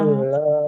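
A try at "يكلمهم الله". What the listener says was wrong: meme-nya nggak boleh panjang. Karena domahnya nggak ketemu. Wawu. Wala yukallimuhumullahu yaumal qiyamah.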